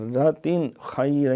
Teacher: یہاں اظہار ہے، تنوین کے بعد خا حروف حلقی سے ہے